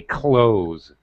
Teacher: probably ninety eight percent of native speakers and by that i mean Brits Australians Americans say close with a Z sound like zoo zebra